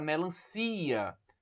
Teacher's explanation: Na palavra melancia, vocês observam que o CI é a sílaba que eu pronuncio com mais força. Então, as outras sílabas são as chamadas sílabas átonas. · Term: sílaba tônica